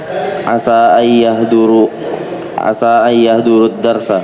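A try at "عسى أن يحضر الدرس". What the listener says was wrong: Buang waw jamaahnya. Jangan asau tapi asa ayyahdurud darsa.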